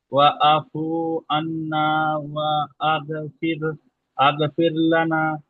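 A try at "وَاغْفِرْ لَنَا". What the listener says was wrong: আগ নেই এখানে। এখানে আগ নেই, ওয়াগফির লানা আছে।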